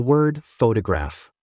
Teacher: in the word photograph we stress the first syllable